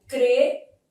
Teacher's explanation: Aqui nesse finalzinho, a letra M tem som de I, sendo som semivocálico. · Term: ditongo fonético